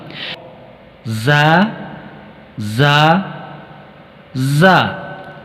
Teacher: اس حرف زا کی آواز بالکل باریک ہے اور چبھنے والی یعنی نوکدار آواز ہونی چاہیے